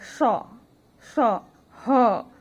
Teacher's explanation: अघोष मतलब इनके उच्चारण में स्वर तंत्रियों में कोई कंपन नहीं होती है, और ये महाप्राण होते हैं। महाप्राण मतलब इनके बोलने में ज्यादा हवा निकलती है।